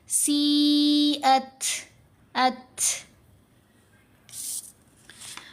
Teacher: جیسے یہاں پر تا ساکن ہے تو ہم نے سی ات نہیں پڑھنا، تا کو کمزور کریں گے تو آواز بنے گی تھ، سی ات، ات. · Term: ہمس